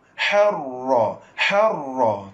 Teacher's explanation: Ra tersebut ra rafhim ra tebal.